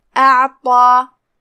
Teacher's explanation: ता को हम मोटी आवाज में पढ़ेंगे